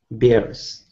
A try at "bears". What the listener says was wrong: Bears. Yeah, so you're saying it more beers, but we want it to be bears. Air, eh, bears.